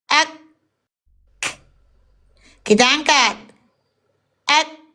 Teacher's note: Huruf kaf kita bunyikan kaf syiddah hams percikan bukan mengalir